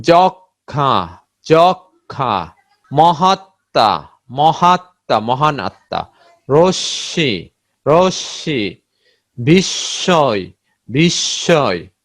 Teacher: ম এর কিন্তু উচ্চারণ হয় না, এবং যে ধ্বনির সাথে যুক্ত হয় ওই ধ্বনিটা দ্বিত্ব হয়ে যায়